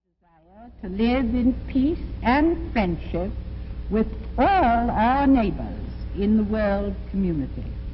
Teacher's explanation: At the end of some of her words, she dropped the R. So this was a non-rhotic accent. And you'll also notice that her vowels sound very different from the vowels of most American accents today.